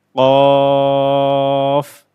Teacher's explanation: একটু গলার ভিতর থেকে ধাক্কা দিয়ে উচ্চারণ করতে হবে